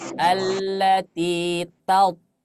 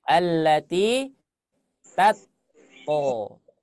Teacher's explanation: jadi huruf ta ketika berharokat fathah suaranya berubah kalau dia tebal. Yang awalnya menjadi ta karena dia tebal menjadi to.